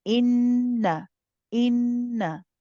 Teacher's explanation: So be careful. In, you prolong the noon mushaddad, the ghunna, but the na is only one